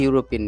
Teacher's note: ಯಾಕೆಂದ್ರೆ ಇಲ್ಲಿ ಯು ತರ ಉಚ್ಚಾರಣೆ ಆಗ್ತದೆ ಅಂದ್ರೆ ವ್ಯಂಜನ ತರ ಉಚ್ಚಾರಣೆ ಆಗುತ್ತದೆ